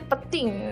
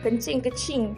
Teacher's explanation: akan dimatikan bunyi N tersebut, iaitu tidak disebut dengan huruf itu, dan huruf selepasnya akan digandakan, iaitu dibaca dengan bersabdu.